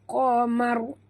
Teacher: qaf tebal ya, jangan baca kamar ya